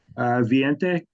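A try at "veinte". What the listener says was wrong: 20. That V is you pronounce it like it's a V, but you pronounce it like a B. It's not 20, it's 20. Okay, but you got the right number, so just your pronunciation on that's a bit more 20.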